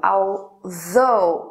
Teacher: O que muda é apenas a vibração na garganta. O TH em although, although, produz vibração na garganta. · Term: TH aqui é vozeado